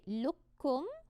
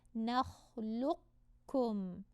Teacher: And just say lukkum, or we can do a half merge where we kind of glue the qaf to the kaf and say nakhluqkum.